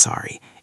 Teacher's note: It's sorry with a rising intonation. >> The tone is crucial here.